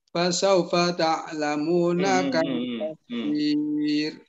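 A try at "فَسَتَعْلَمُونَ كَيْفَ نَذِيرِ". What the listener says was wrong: Ada fasawfa ta'lamun pak. Fasata. Enggak ada fa-nya cuma sekali. Bukan fasaufa tapi fasata.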